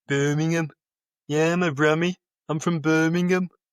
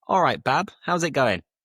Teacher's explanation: there's very little intonation. Everything is a very low pitch. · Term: Brummy accent